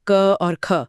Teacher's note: बोलते समय गले पर हाथ रखें तो कोई खास गूंज नहीं मिलेगी · हर वर्ग का पहला और दूसरा वर्ण यानी 1 और 2 अघोष होते हैं।